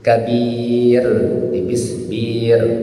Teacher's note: Ya. Ro sebelumnya berbaris bawah itu tipis.